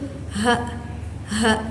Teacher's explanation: huruf H ini keluar dari pangkal tenggorokan, tetapi udaranya keluar lebih lembut dan mengalir. Nah, huruf H ini bersifat mahmus.